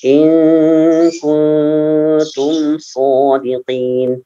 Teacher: mim sukunnya jangan ditahan